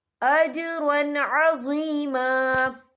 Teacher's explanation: وَسَوْفَ يُؤْتِ اللَّهُ الْمُؤْمِنِينَ أَجْرًا عَظِيمًا، یہ دیکھیں اجرون، را کے پر تنوین ہے، تنوین کے بعد جو ہے عین آ رہا ہے، اور عین جو ہے حروف ہلکی کا ورڈ ہے تو ہم یہ اظہار کریں گے، ہم اسے بنا غننے کے پڑھیں گے